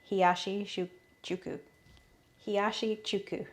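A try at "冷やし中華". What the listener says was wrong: No, Hiyashi chuka. No, you said chuku. chuka.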